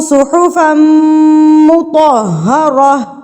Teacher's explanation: فم پہ گنہ ہوگا کیونکہ میم مشدد ہے